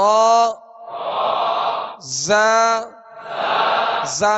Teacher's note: जा जा में सख्ती सीटी की आवाज पैदा होगी